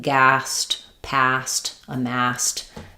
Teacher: when we have a word ending with S and we add the ED, that ED is just going to be a T sound.